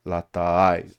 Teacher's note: Um, and so it's kind of the way it's pronounced is without putting a glottal stop, you have to do a sort of like a unstressed A followed by a stressed A